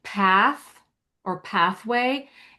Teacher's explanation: that th is unvoiced because you're making that sound by just pushing air between your teeth and your tongue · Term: unvoiced th, unvoiced TH